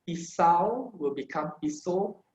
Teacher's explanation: your AU sound will be the O sound